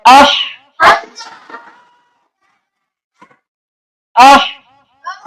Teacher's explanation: ہا ہے حلق کا درمیانی حصہ